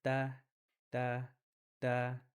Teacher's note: The tip of the tongue that touches the gums behind the 2 upper front teeth. So when you guys say the ta, you'll notice the tongue is touching the back of the front 2 teeth.